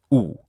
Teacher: U is a high back rounded vowel. So unlike e, it is rounded.